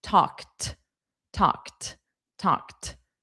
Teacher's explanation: Talked is another one where the ED is pronounced as T.